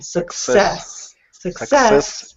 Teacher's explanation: I'm hearing you put the stress on the first syllable but it should be the second syllable